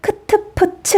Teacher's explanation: 거센소리는 이름에서부터 의미가 감이 오죠. 숨이 거세게 터져나오는 소리 있죠.